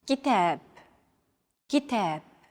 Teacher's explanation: Notice that the second syllable is stressed. It's pronounced longer and louder,